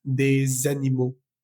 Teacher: Si te fijas en el ejemplo de los animales, esa S de la palabra des animaux, va a sonar, va a vibrar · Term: la liaison